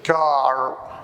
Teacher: If you say the word car, ladder, mainly in American English, car, you will feel that the tip of your tongue is scaled back to touch the end of the hard palate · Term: retroflex